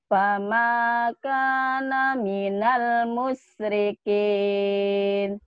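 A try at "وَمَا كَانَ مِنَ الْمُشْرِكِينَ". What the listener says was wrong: Bukan pama ya. Wamakana. Wa ma kana minal musyrikin. Tuh enggak ada yang ditekan-tekan kan? Wa ma kana minal musyrikin. Tapi sekarang ya, entek-enteknya itu dikurangi sedikit ya.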